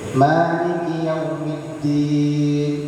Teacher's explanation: Mad itu enggak cukup sampai w tapi sampai u. Yaw supaya dia mad lain.